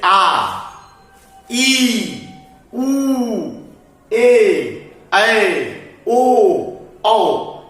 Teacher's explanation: वैसा स्वर जिसका उच्चारण करते समय हस्त स्वर से दुगुना समय लगता है, उससे दुगुना समय लगता है, ज्यादा समय लेता है, उसे हम लोग कहते हैं दीर्घ स्वर।